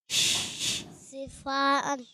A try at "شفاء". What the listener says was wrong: شی کی آواز ہی نہیں آ رہی, کیا کریں اب, کیسے لائیں؟